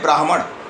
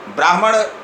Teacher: ब्राह्मण उच्चारण हम करते हैं तो पहले ह का उच्चारण होता है, अर्ध ह का, उसके बाद म का उच्चारण होता है